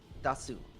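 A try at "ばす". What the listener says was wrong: It's Ba, not Da. Ba. It's Ba. It's a little suit, so it doesn't actually make a sound. It's just shortening the vowel before it.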